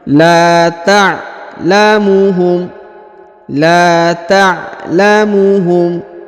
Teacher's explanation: Huruf la dipanjangkan 2 harokat karena terdapat alif di depannya.